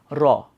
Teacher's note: এটা মূলত হচ্ছে আমাদের দন্তমূলের সাথেই হচ্ছে বাড়ি খায় জিহ্বার ডগা · যখন আমরা র উচ্চারণ করি তখন এই যে আমাদের জিহ্বা হচ্ছে খুব দ্রুত হচ্ছে কম্পিত হয়, খুব দ্রুত হচ্ছে বাড়ি খায় বারবার। সো এই জন্য সেটাকে কি বলা হচ্ছে র, সেই জন্য এটাকে কি বলা হচ্ছে কম্পিত ব্যঞ্জন।